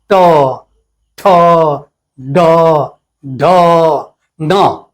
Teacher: तो ट ठ ड ढ, इसको तेजी में बोलने से बार बार देखते हैं कि ऊपर जाके एक जगह वो जीवा ठोकारी मारती है, और जहां टच करती है उसको कहते हैं मूर्धा